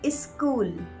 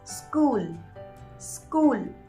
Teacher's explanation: school here e is an extra syllable which is not required you should pronounce it as school school without the e sound in the starting